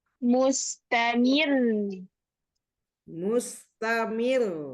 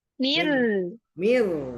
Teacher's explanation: Di sini berhenti pada ro tasdid ya, tapi tipis.